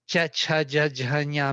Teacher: middle tongue going to the hard palate